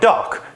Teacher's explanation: The sounds at the beginning and at the end are super weak in terms of how loud they are. No air is escaping the mouth at all, and you can't tell what sounds duh and car just by themselves. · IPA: [dʌk]